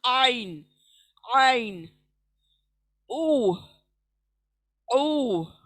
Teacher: अब जो पढ़े जाने वाला है आइन, सेंटर ऑफ द थ्रोट, हलक के बीच का हिस्सा, इसका मखरज है, हलक के बीच का हिस्सा आइन।